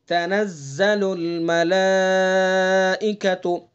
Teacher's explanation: ملائکہ کم سے کم 2 الف کھینچیں گے، اور زیادہ سے زیادہ 4 الف کھینچیں گے۔ اس کو مد متصل ہے اس کے اندر، اور مد متصل کی جو مقدار ہے امام حفص کی روایت میں وہ 2 سے 4، کم از کم 4 اور زیادہ سے زیادہ نہیں، کم سے کم 2 اور زیادہ سے زیادہ 4، ٹھیک ہے؟